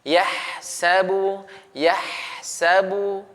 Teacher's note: huruf ha jika dia sukun maka dialirkan dan ditipiskan. Jadi dialirkan, ya terlepas suaranya karena dia rakhawah, ada memiliki sifat rakhawah.